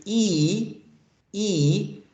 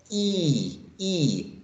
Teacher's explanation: that's going to be considered a tense vowel sound because the lips are spread